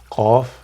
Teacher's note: Qaf, from the back of the tongue.